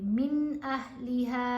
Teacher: نون کو واضح بھی پڑھا جائے گا اور جلدی پڑھیں گے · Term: اظہار